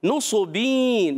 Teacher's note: नुसबीन, नून पर पेश, सौद पर पेश, हरकत को नहीं खींचेंगे। सौद उर्फ़ मुस्तालिया में से भी, उर्फ़ मुतबक़ा में से भी, एक्स्ट्रा मोटे उरूफ में से भी है, तो मोटा रखना है। और नुसबीन, तनवीन के बाद आ गया या, इदगाम माल गुन्ना, कि जब कभी नून साकिन तनवीन के बाद उर्फ़ यरमलून आ जाए, या वाव मीम नून, इदगाम माल गुन्ना।